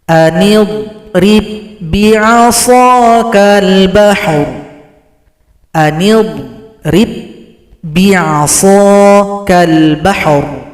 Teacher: Di sini cara berhenti, ra disukunkan berikan bunyi vokal. · Huruf ba yang sukun disambut oleh ba yang tasydid, maka telah gabung idgham mutamatsilain. Yang kita baca adalah huruf ba yang tasydid.